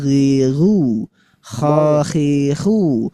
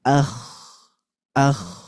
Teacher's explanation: Yang paling dekat dengan tenggorokan ada dua huruf yaitu gin dan juga huruf ko. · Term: adnal halqi